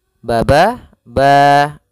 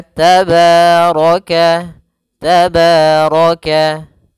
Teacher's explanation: Pada bacaan tabaraka, pada lafal ba di sini ada fathah bertemu alif, maka kita hukumi dengan bacaan yaitu mad tabi'i. Mad tabi'i panjangnya yaitu 2 harakat.